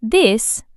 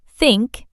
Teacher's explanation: The voiced and unvoiced th as in this versus think